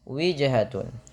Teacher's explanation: pantulkan pada lafal huruf jim yang berharokat sukun, karena ia bacaan qalqalah. Kesalahan yang terjadi dalam baca qalqalah itu tidak mantul.